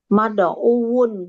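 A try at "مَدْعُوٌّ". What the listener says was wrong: Mad'uun. magzuun double wawunya pakai tasdid. Berarti kalau da'a mad'uun.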